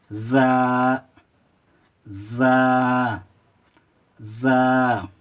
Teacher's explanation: इसको रा और ज़ा में क्या पहचान है कि रा में कोई नुक्ता नहीं होता, जबकि ज़ा में एक ज़ा के ऊपर एक नुक्ता होता है और इसकी आवाज़ सीटी की तरह निकलती है। ज़बान का सिरा जब नीचे वाले दांतों के टकराते हैं तो ये ज़ा अदा होते हैं।